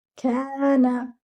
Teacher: Kaf should be given two counts because it is with alif mad. Noon should be given just one count because it is just with a fatha.